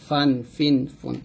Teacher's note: উপরে দাঁতের নিচের ঠোঁটের বাতাস চালু রেখে উচ্চারণ করতে হবে, ফা, অর্থাৎ উপরে দুই দাঁত নিচের ঠোঁটের সাথে লাগাবেন।